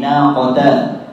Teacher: Ta-nya tidak boleh seperti vokal O